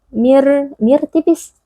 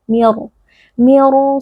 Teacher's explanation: Jadi, kita harus membuatnya berat. Bagaimana cara membuatnya berat? Dengan mengangkat bagian belakang lidah.